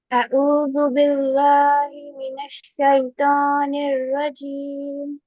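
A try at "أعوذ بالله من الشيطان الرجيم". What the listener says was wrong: دیکھیے، کل آپ نے قاعدہ پڑھا ہے کہ اللہ کے نام سے پہلے زیر ہو تو اللہ کے نام کو باریک پڑھا جائے گا، اس لیے باللہ، لام باریک، باللہ نہیں، اعوذ باللہ، باللہ، باللہ نہیں، اعوذ باللہ، اعوذ باللہ۔ جی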